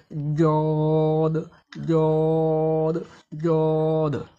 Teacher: জিহুবার গোড়ার কিনারা এবং তার বরাবর উপরের দন্ত মারির সাথে লাগিয়ে জদ হরফকে মোটা ও কষ্ট করে পড়তে হয়